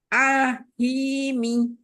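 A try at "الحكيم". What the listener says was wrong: Jangan terputus lam sukunnya. Jadi, bainiah pada lam sukunnya, ya, itu jangan terputus, jangan syiddah, ya, bainiah. Nah, dialirkan sedikit. Jadi, jangan tertahan.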